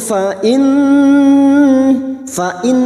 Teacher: Nun yang bertasdid gunna musyaddadah kita dengungkan selama tiga harakat